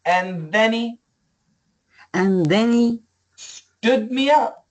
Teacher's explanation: get rid of the H cancel the H keep the th